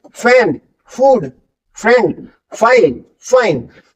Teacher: एफ आप बोल के देखिए ऊपर के दांत ऑलरेडी नीचे वाले लिप्स के पास आ जाएंगे · एफ जो है एक दांत और एक होठ से मिलके निकलता है